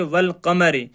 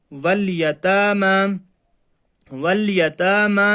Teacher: جو الف ہے اس کو نہیں پڑھا جائے گا، صرف لام کو پڑھا جائے گا۔ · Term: حروف قمری